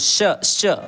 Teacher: श का उच्चारण जीभ की मूर्धा से टकराकर किया जाता है।